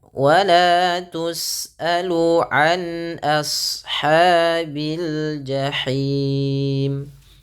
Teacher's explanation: ketika melafalkan ashab, a-nya tipis, shadnya tebal